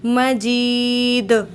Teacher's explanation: والقرآن المجید، مجید۔ اب یہاں پر یہ یا ساکن اس سے پہلے زیر ہے، تو یہ یا مدہ ہے، اس کو ہم 1 الف کے برابر کھینچ کے پڑھتے ہیں